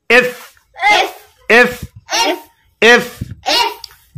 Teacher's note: আমরা বেশিরভাগ দুই ঠোঁট দিয়ে উচ্চারণ করি, এফটা দুই ঠোঁট দিয়ে উচ্চারণ হবে না। এফ উচ্চারণ হবে সামনের উপরের দাঁতের আগা নিচের ঠোঁটের পেটের সঙ্গে লাগিয়ে উচ্চারণ করতে হবে।